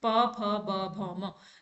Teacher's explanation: हमारी जो ओष्ठ है वो आपस में टच करेंगे